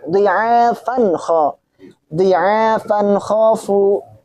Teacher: Itu juga tanwin bertemu dengan kha, maka dibaca jelas atau izhar. Karena tanwin bertemu dengan kha.